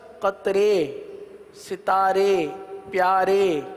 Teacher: زبر کو زیر کی طرف اور الف کو یا کی طرف مائل کر کے پڑھنے کو امالہ کہتے ہیں. امالہ کی راہ کو اردو کے لفظ قطرے، ستارے، پیارے، جس طرح اس میں رے پڑھتے ہیں نا، پیارے، قطرے، ستارے، اس طرح امالہ کی راہ کو پڑھیں گے، یعنی ری نہیں بلکہ رے پڑھیں گے، ری نہیں بلکہ رے پڑھیں گے.